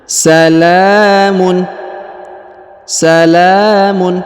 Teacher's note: huruf la dibaca panjang dua harakat karena di atasnya terdapat Alif kecil